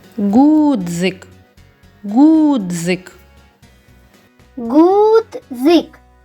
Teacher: Більш наголошеним є звук у. Над ним і ставимо наголос.